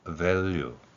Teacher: 윗니로 아랫입술을 물고 목젖이 울리는 이것을 언어학적으로는 labiodental 그리고 continuous라는 표현을 씁니다. 또한 목젖이 울리는 소리라는 좀 복잡한 소리의 특성을 가지고 있죠. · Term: 영어의 V 소리